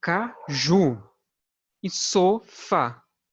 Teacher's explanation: Todos esses exemplos apresentam a última sílaba como sendo a sílaba tônica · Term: oxítona